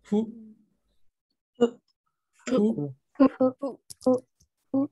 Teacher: fu no se pronuncia como una F, ni tampoco se pronuncia como una H. Es como algo intermedio, ¿vale? Es como que entre F y H.